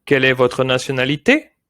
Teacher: when we ask a question in French, your voice, your pitch has to go up